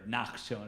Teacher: the ka sound becomes a ch sound, more of a guttural sound